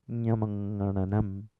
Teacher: the breath release is simultaneous both through the mouth and the nose. You can't close your mouth and say these sounds. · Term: oronasal sounds